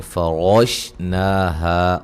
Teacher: را کو موٹا مد اصلی